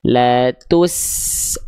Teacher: bunyi sinnya nggak boleh nggak boleh ngikutin bibir monyongnya dhammah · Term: sin sukun